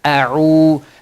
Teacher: So this waw has a dhamma before it. So you're going to stretch it harakatain. Means two haraka. Ain, waw, dhamma, u, a'u. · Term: harf al-mad